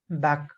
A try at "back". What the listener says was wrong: When you said back right now, in this conversation or this topic that you were using, you said back. I could not hear the K sound.